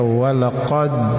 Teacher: Qaf ini merupakan huruf yang dikeluarkan atau disebut makharijul hurufnya di pangkal lidah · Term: huruf qaf